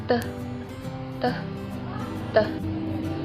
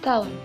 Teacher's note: Konsonan apico-alveolar hambat tak bersuara teh, teh, teh. Terjadi dengan artikulator aktif ujung lidah dan artikulator pasif gigi atas bagian dalam.